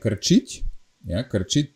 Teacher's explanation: the last k letter got softened, palatalized to ch, because the following letters is e, and whenever the following letter is e or e, then we always palatalize these letters. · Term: palatalization